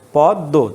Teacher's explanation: শেষে যদি মফলা থাকে তাহলে মফলা উচ্চারিত হয় না, যার সাথে থাকে তার উচ্চারণের দ্বিত্ব ঘটায় এবং নাসিক্য হয়। তাহলে এই একটা দ দুইটা দ হবে, পদ দো, উচ্চারণটা হবে এটা পদ দো।